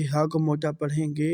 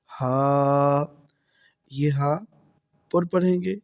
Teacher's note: ہا کو موٹا پڑھیں گے اور یہ حلق کے نیچے والا حصے سے ادا ہوگا